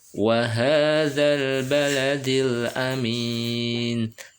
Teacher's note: Zanya masuk ke lam ya. Dibaca langsung masuk ke lam karena lamnya bertasdid.